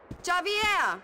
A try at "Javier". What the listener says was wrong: it's pronounced like an H abier